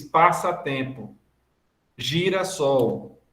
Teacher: Quando você diz passatempo, girassol, a gente está fazendo a acentuação subtônica, essa tônica de menor intensidade